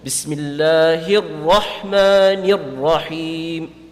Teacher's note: You're supposed to recite the ha with an empty mouth because it's one of the mustafila letters. But the Ra is going to be pronounced full mouth.